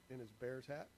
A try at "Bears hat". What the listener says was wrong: It sounded like you said bear tat. Bear tat.